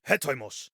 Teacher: This apostrophe at the beginning is the H sound, so he, and then the OI diphthong is just oi